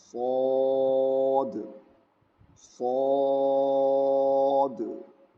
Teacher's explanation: صاد میں سیٹی کی آواز نہیں آنی چاہیے، اور یہ بھی فیٹ لیٹرز ہے، اس کو بھی موٹا پڑھیں گے، اس کو ہمیشہ موٹا پڑھیں گے.